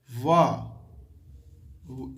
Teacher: व जब हम बोलते हैं तो हमारा दांत का संयोग होता है, ओठ टकराता है, थोड़ा जीभा में भी, जीभा का भी स्पर्श होता है। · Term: दंतोष्ठक